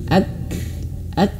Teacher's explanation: Nah, jadi misalkan huruf kaf ini kita sukunkan, ini kan sukun nih, ak maka akan terlihat sifatnya. Sifat yang pertama tertahan suara. Ak, ya. Ak. Dan sifat kedua anginnya mengalir sedikit.